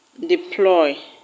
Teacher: The word deploy will have its stress on ploy.